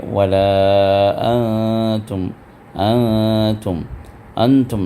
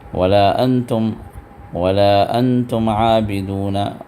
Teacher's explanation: نون کے آواز کو، اخفاء کا مطلب چھپانا، نون کے آواز کو چھپا کر آپ جو ہے اس کے نون کی ادائیگی کرنا ہے، تو وَلَا أَنْتُمْ یہ نون کو چھپا کر نکالنا ہے، جس کو اخفاء کہا جاتا ہے۔